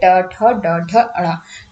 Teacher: इनको बोलते समय आपकी जीवा आपकी मूर्धा को टच करेगी, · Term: ट वर्ग